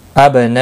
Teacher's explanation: با ساکن پر قلقلہ ہوگا، مد متصل ہے، 4 الف کے برابر کھینچ کر پڑھیں گے